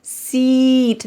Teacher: This has a long E sound. Look at my lips seat. They're very wide, seat. Go ahead and have a seat.